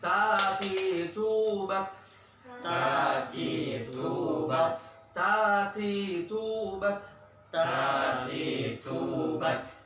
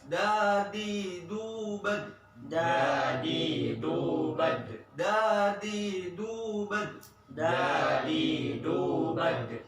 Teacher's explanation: Kalau ta sama da biasa lidahnya terbuka. Kalau ta ada udara keluar, kalau dal tidak ada udara keluar, ya ditahan. Kalau to udah ditahan, diangkat lidahnya.